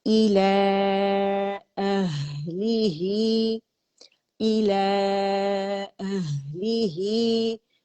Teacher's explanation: ہا ساکن ہے تو اس کا ہمس واضح کریں گے